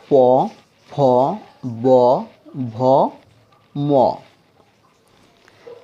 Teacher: তারপর প, ফ, ব, ভ, ম, এই পাঁচটা বর্ণ মুখের ঠোঁট থেকে উচ্চারিত হয়, ঠোঁটের স্পর্শ দিয়ে। শুধুমাত্র ঠোঁটের স্পর্শে উচ্চারিত হয়, এর জন্য পাঁচটাকে বলে ওষ্ঠবর্ণ।